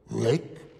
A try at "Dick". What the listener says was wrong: No, I'm not a Rick. I'm a Dick with a D. Da-da-da. Dick. Dick! Dick! Dick!